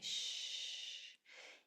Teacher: So here we have our sh sound which is voiceless and it's sustained. You can hang on to that sound indefinitely. Sh. Here's our oi in the middle of a word and our o at the end that says o.